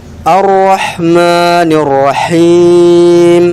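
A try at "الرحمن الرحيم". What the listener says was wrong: Ya, enggak apa-apa.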